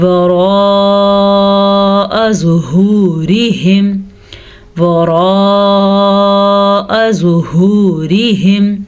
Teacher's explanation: را کو پر پڑھیں گے کیونکہ را پہ زبر ہے